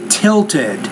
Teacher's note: So there's 2 syllables there. Because the T's at the end of the word, when you put the ED on there, you have to add a new syllable there.